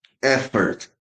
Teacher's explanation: And again, sound O becomes schwa. Schwa means unstressed sound.